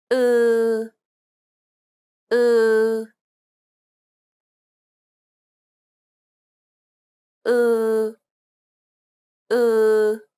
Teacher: It's like an unrounded u sound. Be sure to lengthen the vowel sound.